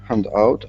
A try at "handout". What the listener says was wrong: the only small thing handout is emphasized at the beginning can you repeat handout